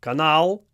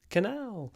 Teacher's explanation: this is one of those rare occasions when the stress actually stays on the second syllable